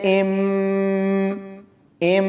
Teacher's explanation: اقلاب کا مطلب ہے تبدیل کرنا۔ تو یہاں ہم نے نون کی آواز کو میم میں تبدیل کر دیا ہے